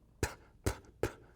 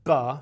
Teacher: difference between p and b is I just engage my voice